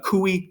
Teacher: So cui is a diphthong, has to be long.